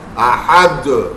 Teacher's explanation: قلقلہ کرتے ہیں، دال ساکن ہو رہا ہے، لیکن کھینچتے نہیں ہیں. تو یہ ہم کرتے تو تھے، وجہ نہیں پتا تھی.